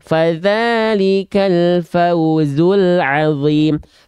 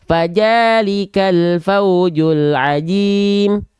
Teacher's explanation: banyak juga orang melafalkan huruf zal berubah menjadi huruf jim